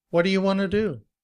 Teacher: We combine what and do to make whatta. You becomes ya. Want to becomes wanna.